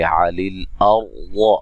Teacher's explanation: सौद को मोटा अदा करेंगे और रा को मोटा अदा करेंगे। रा साकिन से पहले ज़बर है।